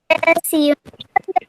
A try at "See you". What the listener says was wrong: Bacanya bukan bukan C ya.